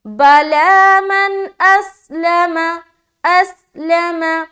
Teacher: اس میں سیٹی کی آواز آئے گی، سیٹی کی آواز ظاہر ہونی چاہیے کیونکہ سین صفیریہ والا حرف ہے · نون کی آواز کو صرف ظاہر کرنا ہے اور جلد پڑھ کر نکل جانا ہے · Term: اظہار